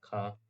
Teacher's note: स्पर्श व्यंजन कंठ ध्वनि अघोष और महाप्राण ध्वनि है ख